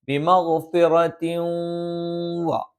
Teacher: ഇദ്ഗാമുൻ ബിഗുന്ന എന്നാണ് പറയുന്നത്. ഈ തെൻവീനിനെ അല്ലെങ്കിൽ നൂനിനെ ശേഷമുള്ള വാവിലേക്ക് നമ്മൾ ചേർത്തുച്ചരിക്കുകയും മണിച്ചുച്ചരിക്കുകയും ചെയ്യണം. ബിമഗ്ഫിറത്തിൻ വ അപ്പൊ ചേർത്തു, അതോടൊപ്പം മണിച്ചുച്ചരിക്കുകയും ചെയ്തു.